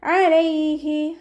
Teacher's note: ഹാൻ്റെ sound അക്സൽ ഹൽക്കാണ് വരുന്നത്, തൊണ്ടയുടെ അവസാന ഭാഗം, തൊണ്ടക്കുഴി എന്നൊക്കെ നമ്മൾ പറയാറില്ലേ, ആ ഭാഗത്തു നിന്നാണ് ഹാ പുറപ്പെടുന്നത്.